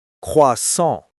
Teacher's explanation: That second S is silent, and it has a lovely nasal sound at the end.